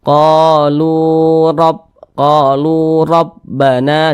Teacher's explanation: huruf ro-nya ini dibaca tebal, dibaca tabkhim, sehingga pangkal lisan kita itu ketika kita mengucapkan itu naik terangkat ke atas, huruf ro-nya kita tebalkan.